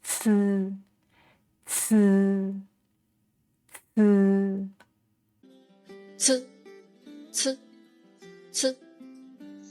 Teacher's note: So when pronouncing this sound, you also need to put the tip of tongue against the back of the teeth, and this time force the air out. And this sound is aspirated, just as in the English word cats.